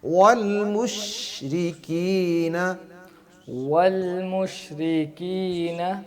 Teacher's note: شین میں تفشی ہو اور تھوڑی سی مضبوطی کے ساتھ گرفت کے ساتھ اس کو پڑھنا ہے. اگر تھوڑا سا ڈھیلا کریں گے تو وہ قلقلہ ہو جائے گا.